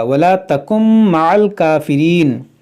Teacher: یہ نون ساکن میم میں داخل ہو جائے گا، یہاں پر ادغام ہوگا